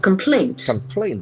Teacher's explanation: There are two syllables, naturally, as we expected. The accent falls on the second syllable.